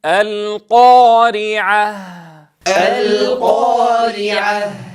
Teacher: نتنبه لأمرين: أولا إلى عدم ضم الشفتين عند النطق بحرف القاف أو عند الألف أيضا، فلا نقول القا هكذا القا ظانين أننا نفخم، فنتنبه لهذا الخطأ الشائع.